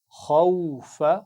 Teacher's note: خا کو موٹا پڑھنا ہے